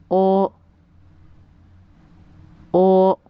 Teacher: Lips are rounded but not moving as the sound is produced. Compared to the sound of O in English oil, the mouth is smaller and more round.